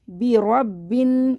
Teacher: ये बा को 2 दफ़ा पढ़ेंगे, तशदीद है क्योंकि तशदीद को 2 दफ़ा पढ़ते हैं। रॉ को बा से मिलाएंगे, बा को नून से मिला देंगे।